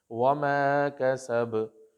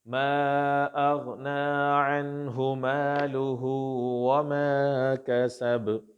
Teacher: تو اب یہاں پہ جو قلقلہ ہوگا وہ قلقلہ وسطیٰ ہوگا، درمیانہ قلقلہ ہوگا، یعنی بہت زیادہ اس کو سٹرونگ بھی نہیں رکھنا اور بہت زیادہ اس کو کمزور بھی نہیں رکھنا